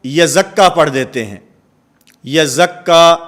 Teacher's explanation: پہلی تشدید جو پہلے حرف کے اوپر موجود ہے وہ ادا نہیں ہو رہی اور دوسرے حرف کی شد جو ہے وہ پڑھی جا رہی ہے